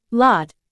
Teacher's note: the tip of the tongue is raised towards the alveolar ridge, the bumpy area behind the upper front teeth, creating a narrowing in the vocal tract. Again, the airflow is not completely blocked, resulting in a continuous and resonant sound. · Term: approximant